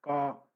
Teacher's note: आपकी जीभ आपकी बिल्कुल लास्ट से जुड़ के बोलेगी, कंठ से, गले से। का, गले पे जोर पड़ेगा, स्वतर जो आपकी स्वर तंत्रियां हैं वो कंपन करेंगी, ठीक है? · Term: कंठ्य